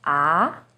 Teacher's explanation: now first tone is high and steady ah second tone arjun starts with a little lower pitch and goes up